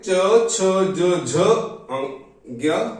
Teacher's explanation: च वर्ग, इसका उच्चारण होता है तालु से। तालु में आते हैं, इस वर्ग में आते हैं च, छ, ज, झ, ज्ञ।